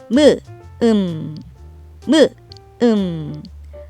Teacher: 끝소리를 낼 때는 입술을 벌린 상태로 시작해요. 일단 입술을 벌리고 있다가 입술을 부드럽게 다물면서 소리 내죠. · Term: 미음의 끝소리